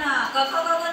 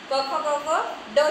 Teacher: मग अनुनासिक म्हटलं जातं त्याला की त्याचं उच्चारण नाकातून होतं